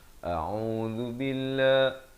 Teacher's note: A di pangkal kerongkong, Ain di pertengahan kerongkong, beri dhammah 2 harakat.